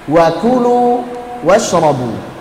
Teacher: Wa ku ada hamsnya. Jangan wa kulu nanti jadi qaf. Yang betul wa ku kakiku.